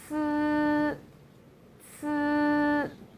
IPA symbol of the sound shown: cī